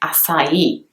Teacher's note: the I has a little stroke on top of it and it is actually enunciated and stressed so the e at the end would actually be quite prominent